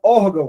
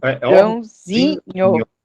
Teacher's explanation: a tônica saiu lá do or e foi para o zin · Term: sílaba tônica